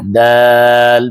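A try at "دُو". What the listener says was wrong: दाल पेश वाव साकिन दू दू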